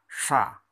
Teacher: Kemudian untuk yang desis adalah sha. Ujung lidah diangkat, tebal jadinya, sha.